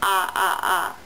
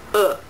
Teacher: the [a] sound - your lips are not rounded But in the [ʊ] sound, your lips are rounded